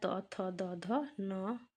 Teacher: इनका उच्चारण स्थान है दांत और इन्हें दंत्य वर्ण कहते हैं।